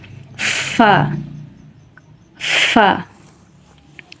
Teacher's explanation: ফা ঠোঁটের ভিজা অংশ থেকে উপরের দাঁত ফা একটা হাওয়া আসবে